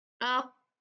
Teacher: कॉफ में हवा को कंसील किया जाता है, रोका जाता है, खुद नहीं रोकते वो, उसका मैकेनिज्म ऐसा है कि वो हवा निकलती नहीं।